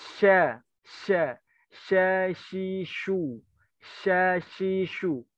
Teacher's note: makhraj huruf shin itu ya di tengah lidah. Berarti si bibir nggak usah monyong-monyong